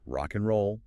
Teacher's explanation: The final consonant of one word links directly onto the initial vowel of the next. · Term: linking